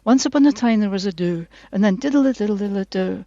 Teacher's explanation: It's the rhythm and also the kind of pitch goes down in quite a kind of regular way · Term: downward inflections